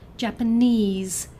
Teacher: Japanese has a stress on the third syllable